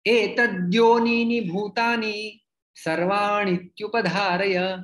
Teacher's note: ण ह्रस्व है, ई उसमें सम्मिलित हो जाके वो दीर्घ बन जाता है